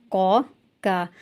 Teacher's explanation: زبان کی جڑ کے 2 حروف ہیں